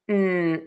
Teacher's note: Then we have the short uh the schwa uh and then end with an N. n Tip of the tongue is behind the top front teeth.